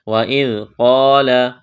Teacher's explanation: ذال کو پڑھتے وقت زبان تھوڑی سی باہر نکالیں گے، نرم کرنا ہے ذال کو